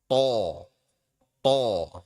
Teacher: Tho, ya dia ditekan keras kemudian baru dilepas.